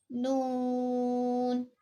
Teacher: ज़बान के किनारे सामने वाले ऊपर के 6 दांतों के मसूड़ों से लगते हैं तो ये हुर्फ नून अदा होता है